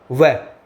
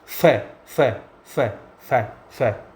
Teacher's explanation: दंत ओष्ठ की बात करते हैं। उच्चारण करते समय नीचे का होठ ऊपर वाले दांतों को स्पर्श करता है। ऐसे वर्णों को दंतोष् कहते हैं।